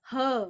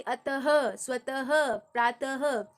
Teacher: उच्चारण हम कैसे करेंगे, ह, कंपन नहीं है, ह, जैसे अतः, स्वतः, प्रातः, तो ह जो साउंड आ रहा है वो अघोष वाला है